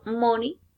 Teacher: The articulators involve lower lip and upper lip. Is bilabial and nasal.